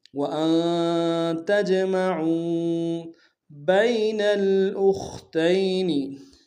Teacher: بین با کو یا کے سامنے آئیں گے، یا لین بغیر کھینچے پڑیں گے ، نون کو آگے لام کے سامنے لانا ہے، لام ساکن